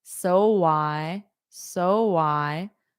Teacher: Rounded lips, which is a soft W to connect. So because your lips are already in that position for so.